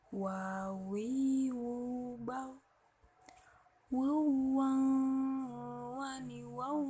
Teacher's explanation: huruf Wah diucapkan dengan mengumpulkan dua bibir